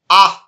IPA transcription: ə